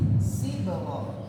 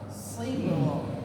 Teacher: Huruf shad ini wajib tebal, apapun harokatnya. Ketika dia kasrah, dia harus tebal.